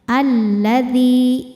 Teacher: Karena alif lam menghadapi huruf syamsiyah yaitu lam juga. Lam double mengandung dua huruf lam itu yaitu lam sukun dan lam fathah. Jadi dibacanya masuk ke lam kedua ya. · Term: idgham syamsi